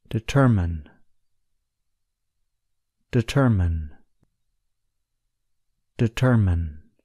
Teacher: The stress is on the second syllable, ter.